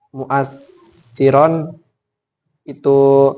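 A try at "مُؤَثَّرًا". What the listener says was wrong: Nah, bukan mu'assiron tapi mu'assaron. Kalau yang atas tadi kan mu'assiron. Nah, ini mu'assaron yang dipengaruhi.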